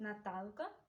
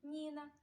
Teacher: у Наталки починається ім'я з твердого приголосного звуку н а У Ніни починається ім'я з м'якого приголосного звуку нь